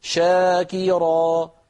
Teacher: لكن لما أقول شاكرا الفم نطق الشين ومباشرة انتقل إلى الحرف الذي بعدها، فالشين في شاكرا فيها رخاوة وفيها همس وفيها تفش، لكنه سريع، السبب أن الحرف متحرك